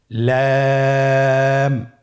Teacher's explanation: লাম হরফটির মাখরাজ হলো জিহ্বার আগার কিনারা উপরের দাঁতের মাড়ির সঙ্গে লাগিয়ে উচ্চারিত হয়।